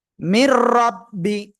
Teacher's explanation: নুন সাকিনের পরে ঈদগামে বেলাগুন্নার অক্ষর র আসছে, গুন্না ছাড়া মিলিয়ে পড়বেন।